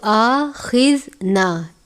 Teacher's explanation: جزم کی علامت نہیں ہے، اس لیے ہم نے جھٹکا دے کر نہیں پڑھنا، سادہ پڑھنا ہے